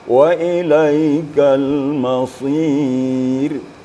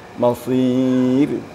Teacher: ra apabila sukun atau disukunkan sebelumnya ada Ya Sukun maka ra itu sangat tipis contoh wa ilaikal masir tipis mungkin di kalau bisa bibir kita